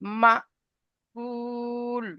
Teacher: সাকিন যুক্ত হামজাকে একটু ঝটকা দিয়ে পড়তে হয়